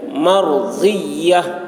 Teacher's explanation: ضاد کو یا کے ساتھ بہت سختی کے ساتھ ملائیں گے